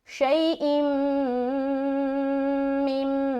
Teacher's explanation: यहाँ पर मीम के ऊपर शद आ गया तो यहाँ पर हम गुन्ना करेंगे